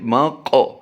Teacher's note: میم قاف زبر مق، قاف کی ادائیگی ہم نے پوری بھی کرنی ہے، اور قاف حروف قلقلہ میں بھی شامل ہوتا ہے، اس لیے ہم یہاں پر قلقلہ بھی کریں گے، یعنی پور بھی کریں گے قاف کو اور قلقلہ بھی کریں گے۔